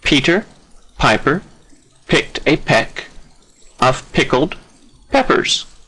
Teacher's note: You see the bilabial p repeats itself.